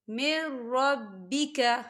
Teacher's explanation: نون ساکن کے بعد را آ رہا ہے، اور را جو ہے حروف یرملون میں سے ہے، تو ہم اسے بنا غنّے کے پڑھیں گے۔ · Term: ادغام